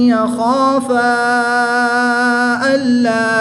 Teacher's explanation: الف مدہ کے بعد حمزہ دوسرے کلمے میں ہے تو یہاں پر مد منفصل ہوگی، 2 سے 3 الف تک کھینچ کر پڑھیں گے